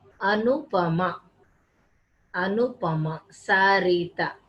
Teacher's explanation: So all the syllables in Indian names are said equally.